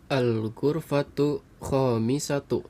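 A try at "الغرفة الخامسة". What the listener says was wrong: ada alif lamnya.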